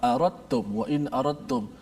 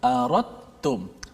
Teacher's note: Tak ada pun huruf dal kat situ, tak bunyi pun dari sudut sebutan huruf dal, tapi dekat tulisan ada huruf dal. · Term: idgham mutajanisain